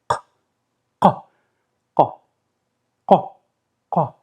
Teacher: To pronounce the qa sound, you will need to deploy the uvula. you know, that membrane at the back of your mouth, and you press it against the back of your tongue and you go, ka, ka, ka, ka.